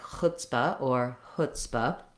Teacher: So be aware that when you're saying something like chutzpah or chutzpah, you want the same sounds you have in the word hood or would. Not a tense oo, but rather a lax sound.